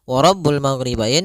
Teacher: Nah, karena huruf ghain tidak ada sifat qalqalah, tidak ada sifat pantulan